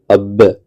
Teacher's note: हमारे दोनों होठ आपस में मिल जाते हैं। अब अब इसलिए बे का मखरज जो है वह दोनों होठ है।